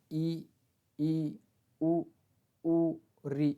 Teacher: संवृत स्वर यानी इनके उच्चारण में हमारे मुंह कम खुलते हैं